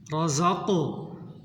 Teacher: قاف ساکن ہے، قلقلہ کریں۔